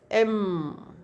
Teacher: Because airflow comes through nose or nostril. That is nasal sound. · So when M we speak, then airflow comes from nostril, and then that's a Adam's apple vibrates. That is voiced bilabial because lips are together.